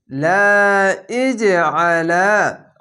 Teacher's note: কলকলাটি ধাক্কা মেরে নিচে সাউন্ড আসবে